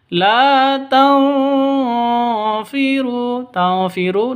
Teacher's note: nun mati bertemu dengan fa, samar didengungkan, siap-siap ke huruf fa-nya. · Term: ikhfa hakiki